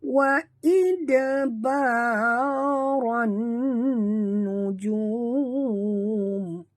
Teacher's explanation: Masukkan bunyi ra ini terus ke dalam nun disertai dengung kerana di atas nun ada tasydid, wajib dengung